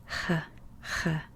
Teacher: throat to make the h sound it's just a ha ha just like push out the h a little harder than you would in english